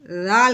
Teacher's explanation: نرمی والا حرف ہے، اس کو ہم نے سختی کی زا کی آواز نہیں نکالنی۔ ذال جو ہے نا وہ زبان جو اوپر والے دانت اور نیچے والے دانت کے درمیان ذرا سی لے کے آنی ہے، ذال کر کے، ٹھیک ہے، ذرا سی نوک لے کے آنی باہر۔